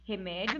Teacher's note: Remédio, nós vamos perceber aqui que nós temos 3 sílabas e nós temos a penúltima sílaba tônica. E nessa ideia, nós vamos perceber também que nós temos aqui o encontro de 2 vogais, que nós chamamos de ditongo.